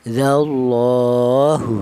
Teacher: Ini menunjukkan bahwa huruf lam tersebut dibaca panjang ya. Panjangnya itu satu alif atau dua harakat atau dua ketukan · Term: lam jalalah